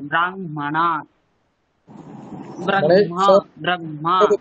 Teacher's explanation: আগে আমরা মকারটাকে উচ্চারণ করব তারপরে হকারটা · যেখানে হকারের সঙ্গে বর্গের পঞ্চম বর্ণের যদি সংযোগ থাকে সেক্ষেত্রে আমরা আগে পঞ্চম বর্ণটিকে উচ্চারণ করব তারপরে গিয়ে আমরা হকারটি উচ্চারণ